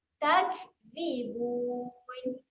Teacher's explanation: Kaf ketika mati ada sifat keluar angin.